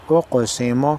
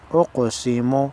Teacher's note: قاف حروف قلقلہ میں سے ہے، ہلا کر پڑھیں گے